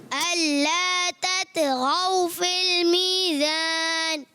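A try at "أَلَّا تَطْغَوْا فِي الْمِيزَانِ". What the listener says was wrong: जा की अदायगी क्लियर करनी है।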